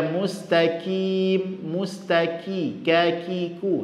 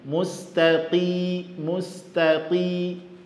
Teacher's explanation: Huruf qaf ketika baris bawah rentan terjadi menjadi huruf kaf.